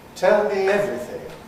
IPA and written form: ˈtel mi ˈevriθɪŋ (tell me everything)